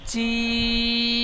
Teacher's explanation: জিম অক্ষরটা কিন্তু তিন আলিফ টান হবে